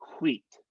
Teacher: make sure each um each w has an h sound in front of it